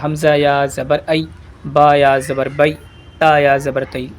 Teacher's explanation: قاعدہ یہ ہے، یا ساکن سے پہلے زبر ہو تو یائے لین ہوگی، جیسے با یا زبر بئی، یعنی کہ کوئی یا ساکن ہو اور اس یا ساکن سے پہلے زبر لگا ہوا ہو تو وہ یائے لین میں بدل جاتی ہے، یا جیسے کہ با یا زبر بئی ہے نا۔ اور اس یائے لین کو ذرا بھی کھینچتے نہیں ہیں، بغیر بڑھائی سے پڑھتے ہیں